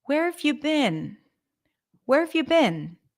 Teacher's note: I would also say that the stressed words are where and been.